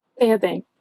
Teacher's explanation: Notice how the first E needs to be open.